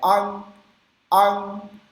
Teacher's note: O G vai usar o G na garganta como se a gente fosse falar ângulo, só que a gente não pronuncia esse G não pode ser pronunciado.